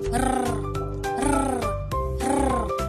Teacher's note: Pakatal. Ang hangin ay ilang ulit na hinaharang at pinapabayaang lumabas sa pamamagitan ng ilang beses na paglapag ng dulo ng nakaarkong dila. Halimbawa nito ay ang letrang R na may tunog R, R, R.